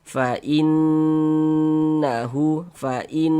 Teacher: di bagian fainnya itu kita tahan sejenak suaranya kita panjangkan, kita gunahkan. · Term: gunah musyaddadah